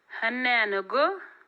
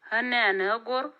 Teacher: The noun is an ordinary noun, and the preceding vowel is short and the tone on the vowel is low. By contrast, in 2b, before the noun with floating suprasegmental component, the vowel is long and the tone is a rise.